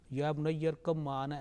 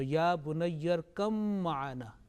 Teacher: this ba will be dropped and kaf and mim will be joined together. Okay, ba completely merged and will be dropped.